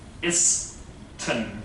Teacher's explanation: the N between the I and S will be deleted